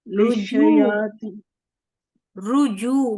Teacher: ہونٹوں کو گول ہی رکھیے. را کے اوپر بھی پیش ہے، جیم کے اوپر بھی پیش ہے، اور آگے واو مد ہے